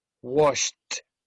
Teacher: No vibration, so the pronunciation should be a T of the ED.